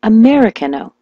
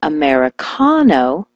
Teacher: When I told her to switch the stress to the ka